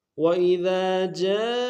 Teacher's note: وَإِذَا میں ذال کے ساتھ الف مدہ ہے، ایک دال میں کھینچیں گے، دال کو باریک ادا کریں گے۔